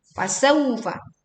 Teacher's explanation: kita baca dengan waw lin ya, dengan baca yang lembut